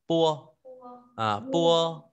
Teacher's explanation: P đọc nguyên P nhưng bật hơi ta đọc là pua.